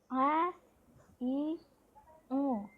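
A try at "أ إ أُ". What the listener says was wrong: Kayaknya hamzahnya jadi ain juga tuh kali dia tuh.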